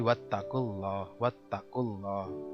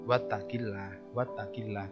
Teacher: Ini disebut dengan lam tebal, tafhim atau mufakham.